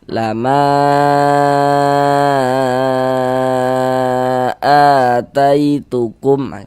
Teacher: Jangan disalahkan karena ada yang membolehkan dibaca dengan panjang dua harakat. Nah, kita panjangkan 4 sampai dengan 5 harakat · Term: mad jaiz munfasil